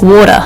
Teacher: In American English, they might say it more like a D